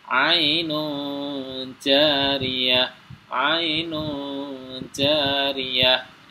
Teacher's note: Nun sukunnya ini di sini dibaca samar langsung dimasukkan huruf ja